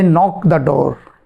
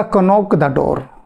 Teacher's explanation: के साइलेंट होता है, वह मौन में चला जाता है, उसे बोलना नहीं होता, उसका उच्चारण नहीं होता